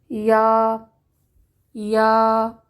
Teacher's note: یا، باریک اور نرم حرف ہے، وسط لسان یعنی زبان کے درمیان اور اس کے مقابل تالو سے ادائیگی ہوتی ہے۔ یا کی آواز میں رگڑ نہیں ہونی چاہیے، جیسا کہ ی کی آواز نہیں ہونی چاہیے، یا نہیں ہونا چاہیے، یا، خواہ اس پر شد ہی کیوں نہ ہو، جیسا کہ سورہ الفاتحہ میں ہم پڑھتے ہیں ایاک ایاک، اس کو ایج کی آواز نہیں آنی چاہیے۔